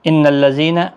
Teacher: ان الذین نون مشدد پر غنہ ہوگا